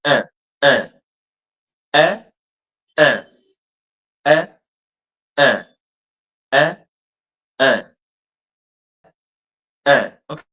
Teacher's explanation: you're going to open your mouth, but at the same time, it's going to pass through your nose as well. · So, it's it's a nasal. I'm nasalizing the sound. The sound is also passing through my nose. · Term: nasal sound